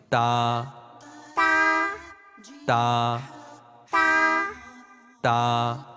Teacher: मेरा इल्म बढ़ा या पांचवा मरहला, प्यारे मदनी मुन्नों और मदनी मुन्नियों, अब हम आपको बताएंगे ता की अदायगी के अरबी और उर्दू में ता को कैसे पढ़ते हैं। अरबी में تا کی ادائیگی کا طریقہ یہ ہے کہ زبان کی نوک اور اوپر کے دانتوں کی جڑ سے تا ادا ہوتا ہے